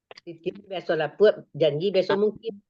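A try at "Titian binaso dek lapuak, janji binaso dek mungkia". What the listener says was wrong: Jangan biasa. Kalau itulah salah. Dipangkat titian binaso pakai deknya. Titian binaso dek lapuk. Janji binaso dek. Jangan beko janji biasa mungkin itulah mulai betele itu. Itulah menambah.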